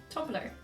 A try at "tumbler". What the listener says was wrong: You pronounce the B. Tumbler.